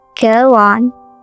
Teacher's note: the O at the end of go connects right into the on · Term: linking